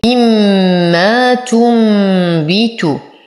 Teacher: لدينا نون ساكنة وبعدها الباء في كلمة واحدة، تقلب هذه النون الساكنة ميما عند الباء، فالحكم إقلاب مع الغنة